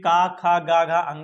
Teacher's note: तो गले में टकराती है तो ध्यान रखिएगा, तो जो हमारा पहला वर्ग है ये का वर्ग, जिसमें का खा गा घा अंगा आता है, ये कंठ, ये कंठ से उच्चारित होते हैं, गले से।